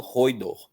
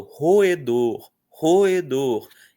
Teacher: Então, a palavra se parte em três. O fica de um lado, o e fica do outro.